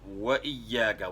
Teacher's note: واو میں ہونٹ گول کرنے ہیں، نہ تمام گول کرنے ہیں